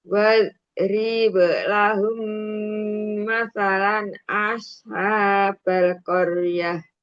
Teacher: Bunda di sini ada mim sukun bertemu mim idgham mimi ya. Lahum tahan dulu dengungnya sampai 3 harokat